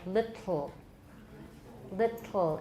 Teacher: you can hear the kind of slobbery air coming out the side it'll get a little bit there's a little bit of saliva